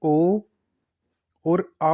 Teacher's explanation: ओ और आउ जो होते हैं इन दोनों का उच्चारण स्थान क्या होता है? कंठोष्ठ होता है। कंठ और होठ दोनों का मिश्रण होता है।